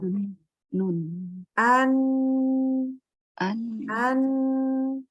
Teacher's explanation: Nah, karena kita bacanya seperti itu, maka huruf nun ini, ya, huruf nun ini juga terasa, harusnya semestinya terasa disertai dengan ada dengung dari rongga hidung. Ya, jadi pas kita bilang an itu terasa ada keluar juga dari hidung. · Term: huruf gunnah